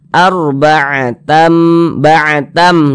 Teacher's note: Bunyi tanwin dimasukkan ke huruf mim, melebur ke huruf mim. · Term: idgham bi gunnah